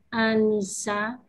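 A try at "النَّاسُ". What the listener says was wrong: An-nasu. Kalau Anissa seperti di atas tulisannya. Kalau ini an-nasu. Nanya panjang.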